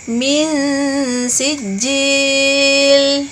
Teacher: huruf nun sukun bertemu dengan huruf sin, maka hukum bacaannya disebut dengan ikhfa, artinya dibaca dengan samar-samar dan berdengung